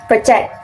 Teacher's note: So, the word stress is on the first syllable. When it's a verb, the the word stress is moved to the second syllable, project. So, I think the right pronunciation in the text is project, not project.